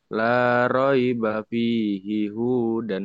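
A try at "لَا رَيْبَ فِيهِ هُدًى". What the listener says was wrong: Kenapa panjang hu-nya? Ada yang manjangin nggak? Jangan dipanjangin ya.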